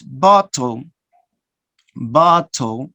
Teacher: Okay, you omit the second vowel. You omit, you don't pronounce the second vowel. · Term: syllabic consonant